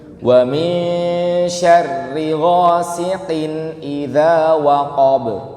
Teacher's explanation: Qaf itu suara hamsnya dihilangin, suara basahnya.